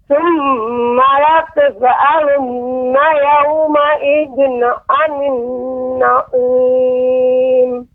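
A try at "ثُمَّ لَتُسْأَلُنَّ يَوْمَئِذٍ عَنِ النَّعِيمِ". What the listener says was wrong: Ya, ayat yang terakhir Ibu, sin tadi seperti qalqalah. Tsumma latus'alu, tus'alu. Seharusnya tsumma latus'alun, tus'alun.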